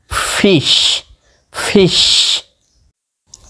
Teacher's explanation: এফ এর উচ্চারণ করার শেষে হালকা বাতাস বের হবে এফ এফ যেমন একটু বাতাস বের হচ্ছে দেখুন ফিশ ফিশ জি